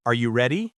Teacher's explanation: The important part is the stress on ready and the rising tone at the end.